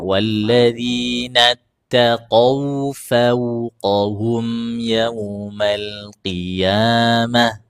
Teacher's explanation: wau sukun sebelumnya fathah usahakan bunyinya u semu